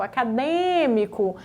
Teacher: a antepenúltima é a mais forte ou a terceira de trás para frente